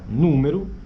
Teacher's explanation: a gente escreve com O, mas na verdade está saindo uma espécie de U. Número tem o símbolo U, né, da mesma forma. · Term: vogal pós-tônica final